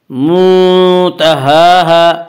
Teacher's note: منتہاہا، الف مدہ الف میں شا مدہ ہوتا ہے، الف سے پہلے زبر ہوتا ہے، الف مدہ کو ایک الف کے برابر کھینچ کر پڑھیں گے